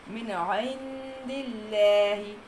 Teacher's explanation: اللہ کے لام کو باریک پڑھنا ہے کیونکہ دال کے نیچے زیر آ گئی